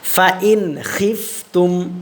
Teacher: খটা কিন্তু হলকের শেষ ভাগ থেকে উচ্চারণ হবে